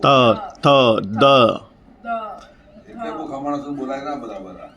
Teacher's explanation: ત થ દ ધ ન એમાં આપણે દાંતને ટચ થવા જોઈએ.